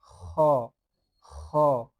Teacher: খলকের শেষ ভাগ হইতে ভালোভাবে উচ্চারণ করে নিবেন।